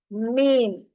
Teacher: बाहर का जो खुश्क हिस्सा है उसको आपस में मिलाने से मीम अदा होता है। मीम। जैसे हम लेडीज को तो पता है, लिपस्टिक जब लगाते हैं तो उस उसको मिक्स करते हुए हम होंठों को आपस में मिलाते हैं, उसी से ये मीम भी अदा होता है।